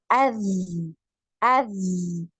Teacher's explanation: Jadi tertahan aliran nafasnya, mengalir aliran suara. Jadi ketika sukun, ini zal ini dialirkan, ya, ketika sukun.